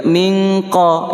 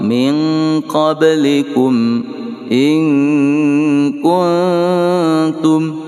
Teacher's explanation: Lillahi in kuntum, nun sukun bertemu dengan kaf, hukumnya ikhfa hakiki sughra berdengung 2 harakah. Kalau kita baca in itu pakai nge. Min qablikum pakai nge juga, min qa, ya kan?